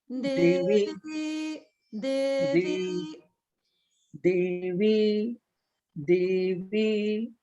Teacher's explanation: Just when you say Divi, you're saying both on the middle swara. Okay, so the Di, the first syllable is down.